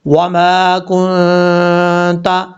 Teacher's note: وما کنت، یہاں پر میم کے آگے الف ہے، ایک الف کی مقدار لمبا کریں گے، کاف کے بعد جو نون ہے، نون ساکن ہے، نون ساکن کے بعد تا ہے، یہاں نون ساکن کا اخفا ہوگا، یعنی ایک الف کی مقدار غنہ کر کے پڑھا جائے گا